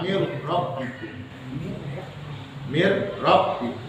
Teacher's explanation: Idgham tapi tanpa dengung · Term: Idgham bilagu